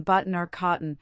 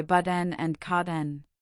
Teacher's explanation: N can also be a syllabic consonant, forming a syllable without a vowel, as in button or cotton, where we naturally say but-N and cot-N.